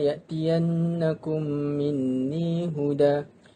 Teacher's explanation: Apabila mim, fa imma ya'tiyannakum minni huda, mim mati bertemu dengan mim yang berbaris, hendaklah didengungkan dengan kadar dua harakat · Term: idgham mislain